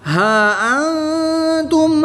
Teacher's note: کھڑی زبر کے بعد حمزہ دوسرے کلمے میں ہے تو یہاں پر مد منفصل ہوگی، 2 سے 3 الف تک کھینچ کر پڑھیں گے۔ نون ساکن کے بعد تا حروف اخفا میں سے ہے تو یہاں پر اخفا ہوگا یعنی غنہ زمانی کر کے پڑھیں گے۔